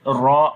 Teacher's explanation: Ra we read in heavy sound due to dhamma on it, ra, and there is waw madda, we long as well.